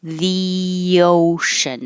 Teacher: when you say the, your tongue is very high, the ocean, and it slides down and makes a Y. So that's why it says yo.